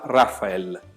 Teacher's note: A gente joga pra esquerda um pouco o acento, né? fica no ra e o L que tá no final também vai ter som de L.